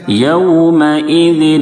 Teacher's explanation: واو ساکن سے پہلے زبر ہے، واولین ہوگا، اس کو نرم آواز کے ساتھ معروف ادا کریں گے